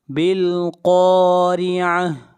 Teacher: بالقارعہ، قاف حروف مستعلیہ میں سے ہے، قاف کو موٹا پڑھا جائے گا، اور را کو باریک پڑھیں گے اس لیے کہ را کے نیچے زیر ہے، اور آخر میں گول تا ہے، جب اس کے اوپر سٹاپ کریں گے تو یہ ہا بن جائے گی۔